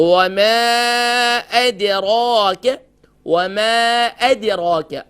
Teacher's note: میم کا مخرج کیا ہے، دونوں ہونٹوں کے ڈرائی پارٹ سے میم ادا ہوتا ہے